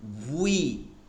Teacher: কি বলতে হবে, ইংলিশে যে উইটা আছে উই, এই উই উচ্চারণটাকে ঠোঁট গোল করে বলতে হবে